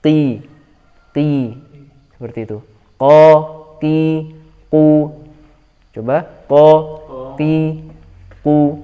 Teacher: Ketika dilepaskan dari langit-langit di atasnya, hati-hati jangan sampai ada udara yang menghembus. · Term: qaf